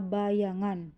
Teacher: Bunyi yang dihasilkan palatum menghasilkan bunyi mediopalatal, yaitu bunyi yang terjadi akibat tengah lidah bersentuhan dengan langit-langit keras. Misalnya bunyi Y pada kata bayangan.